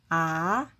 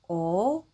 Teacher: 아, 어 모두 입을 동그랗게 하고 발음하는 특징이 있어요